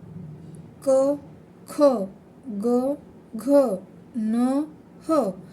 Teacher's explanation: याचा उच्चार डायरेक्ट कंठामधून येतो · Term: कंठ वर्ण